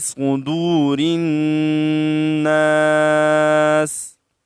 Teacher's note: में वावे मद्दा है और रा को नून के साथ मिलाएंगे रा बारीक पड़ी जाती है कसरे की वजह से और फिर सीन को हम साकन करते हैं ठहरने की वजह